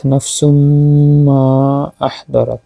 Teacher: এখানে হচ্ছে তানবিনের পরে মিম আসছে, ইদগামে মা আল গুন্না, পরে আবার মিম ও তাসদিদ, এখানে ওয়াজিব গুন্না।